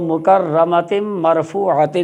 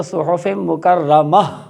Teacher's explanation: جب کسی لفظ کے آخر میں گول والی تا ہوتی ہے، جب اس پہ وقف کریں گے تو اس کو ہا ساکن سے بدلیں گے